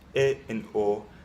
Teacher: in Spanish, these vowels are monophones, E and O, So, for example, in amigo instead of amigo, or corazón instead of corazón, or inglés instead of inglés.